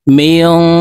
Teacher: নুন সাকিনের পরে ইকফার হরফ দাল আসছে, তো এই নুনকে গুন্নার সহিত নাকের ভিতরে লুকাইয়া পড়ব। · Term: ইকফা গুন্না